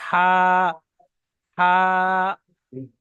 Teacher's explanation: গলার ভিতর থেকে আওয়াজটা আসে, বড় মোটা করে আওয়াজটা আসে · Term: বড় হা